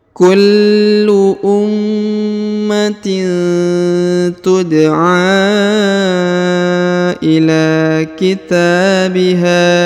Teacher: huruf a dipanjangkan 5 harokat ya, karena di atasnya terdapat tanda panjang 5 harokat